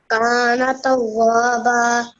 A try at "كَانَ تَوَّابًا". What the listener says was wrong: While we were reciting before, you prolonged the alif sound over here, and you're not supposed to do that. You pronounce it like tawwaba. It's not supposed to be pronounced like that. You're not supposed to prolong the alif sound here. You're supposed to stress a little bit on the wow because of the mushaddad, wow mushaddad here. But you're not supposed to prolong this part, but you can prolong the ba sound here a little bit because the verse is ending over here.